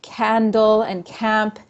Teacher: the non-raising of prenasal a, so that is saying words like candle and camp instead of candle and camp